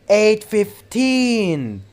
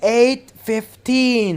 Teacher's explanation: in short if you want to tell time you have to stress the second syllable